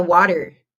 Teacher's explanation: Esse T no meio virou um som de D.